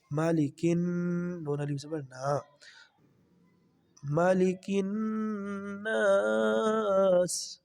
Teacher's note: آگے نون کے اوپر شاد ہے، نون کے ساتھ ملائیں گے، نون پر غنہ بھی کریں گے۔ ٹھیک ہے جی، مالکن، نون الف زبر نا، مالکن الناس۔